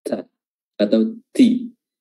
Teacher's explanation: makhrajnya adalah ujung lidah bertemu dengan gigi seri atas bagian belakang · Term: huruf ta